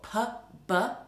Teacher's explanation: Now, if you've ever been spat at and it's landed in your eye, somebody's probably done it on a plosive, because they're made by two organs of articulation, two lips coming together, a build-up of air behind, and then an explosion as the p comes out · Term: plosive sounds